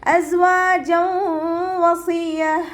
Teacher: സായ് ഉച്ചരിക്കുമ്പോൾ അസ് എന്നുള്ളൊരു സൗണ്ട് തന്നെ കൊടുക്കുക കേട്ടോ. സീനിൻ്റെ സൗണ്ടായി പോവാതെ നോക്കുക. വാവിൻ്റെ കൂടെ അലിഫ് സ്വാഗിറ വന്നു, 2 കൗണ്ട് നീട്ടി കൊടുക്കുക.